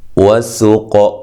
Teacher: سین کو باریک، قاف کو موٹا اور قلقلہ